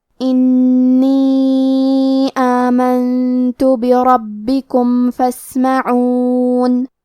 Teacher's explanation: کلمت آمنتو میں نون ساکن ہے، پھر حرف التا ہے، تا حروف الاخفاء میں سے ہے تو ہم یہ حکم کو غنہ کے ساتھ ادا کریں گے۔ آمنتو، کلمت بربکم میں حرف را کو تفخیم سے پڑھیں گے کیونکہ اس پہ زبر ہے۔ با پہ تشدید ہے تو ہمیں 2 حرف کے برابر با کو پڑھنا ہے۔